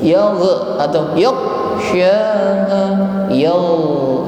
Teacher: mengucapkan ghain saat berharokat sukun tidak boleh memantul